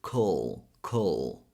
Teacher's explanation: You can imagine you're adding a schwa sound between K and L, or that you're simply skipping the vowel. · K, K. And a dark L sound, which is that L sound you put a little bit more pressure in the back of your tongue